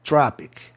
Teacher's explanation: sempre que termina a palavra em IC, a tendência do O é soar A, tropic.